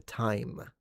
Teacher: time initially started as team team then it went to tame and then it went to time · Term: the vowel shift